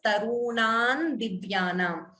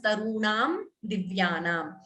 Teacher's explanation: Anuswara here followed by Di. You could optionally combine the Sandhi and chant it as Tarunan Divyanam. Or it is also correct to chant the Anuswara completely as Tarunam Divyanam.